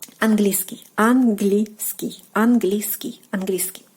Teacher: when you're trying to pronounce it quicker, the sound E will basically like disappear.